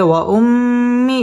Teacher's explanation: মিমের মধ্যে তাসদিদ আসছে এটা হচ্ছে ওয়াজিব গুন্নাহ করে পড়তে হবে